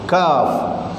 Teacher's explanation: Kaf ni di atas kat dia punya pangkal halqah atas. Nak masuk kat rongga dah. Nak masuk dekat ruang mulut.